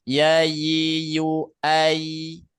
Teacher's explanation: Huruf ya tengah-tengah lidah yang mengarah ke langit-langit mulut.